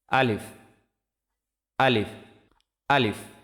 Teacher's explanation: আলিফ মুখের খালি জায়গা হইতে উচ্চারিত হয়